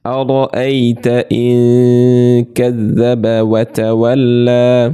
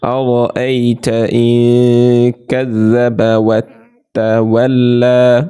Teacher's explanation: এই যে কাফ এসেছে, এর জন্য আমরা গুণা করলাম নাকের ভেতর লুকিয়ে, ইকফা গুণা।